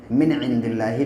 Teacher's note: نون ساکن کے بعد جب عین ہوتا ہے تو پھر غنہ نہیں ہوتا ہے، یعنی ناک میں آواز کو روکتے نہیں ہیں ، من عند اللہ، نون کو صرف ظاہر کر کے پڑھتے